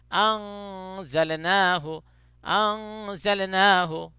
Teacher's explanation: حروف اخفا جو ہے 15 ہے، اس میں سے ایک زا بھی ہے، تو نون ساکن یا تنوین کے بعد ان 15 میں سے کوئی ایک حرف بھی آ جائے تو وہاں پہ اخفا ہوتا ہے، یعنی نون کی آواز کو صاف صاف نہیں پڑھتے بلکہ اس کو تھوڑا ناک میں چھپا کے پڑھتے ہیں۔